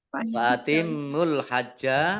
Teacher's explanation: mim tasdid ya dibaca gunnah mendengung ditahan 2 harokat.